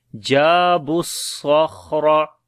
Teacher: صاد کے اوپر صفت ہمس بھی ہے، صفت صفیر بھی ہے، اور موٹا بھی پڑھیں گے یعنی صفت استعلا بھی ہے۔